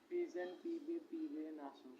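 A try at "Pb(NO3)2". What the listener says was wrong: पीबे पीबे दो बार क्यों आ रहा है भाई, पढ़ो जरा यहाँ पे क्या लिखा है। फी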